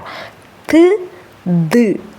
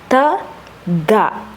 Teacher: നമ്മുടെ നാവിന്റെ അറ്റം ടിപ്പ് എന്ത് ചെയ്യുന്നു പല്ലിൽ വന്നു മുട്ടുന്നു അങ്ങനെ ആകുമ്പോൾ ഈ ശബ്ദം ഉണ്ടാകുന്നു പല്ലിന്റെ പുറകുവശത്തോട്ടാ ത് ദ് ഓക്കേ തത്ത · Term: ദന്തൽ